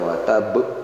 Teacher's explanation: Watab ini ada tasydid dan huruf ba di ujung sehingga ini qalqalah kubro